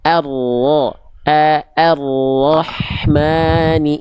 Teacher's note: ro-nya tebal, hamzanya tipis.